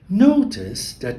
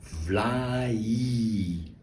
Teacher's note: Vlaai. Notice that the I gets a consonant sound, like a J.